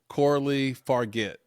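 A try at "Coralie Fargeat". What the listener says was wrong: This is no. I think the G is a J sound, so this would be a Farjit.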